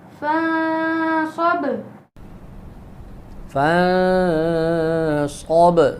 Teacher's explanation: صاد کو موٹا کریں گے اور با پہ قلقلہ ہوگا، نون پہ اخفا ہوگا